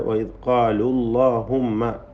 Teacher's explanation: വൈസ്കാലുല്ലാഹുമ്മ എന്ന് വാവിനെ ഹദ്ഫ് ചെയ്യുന്നു